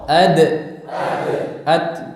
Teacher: Ujung lidah bertemu dengan pangkal gigi seri atas.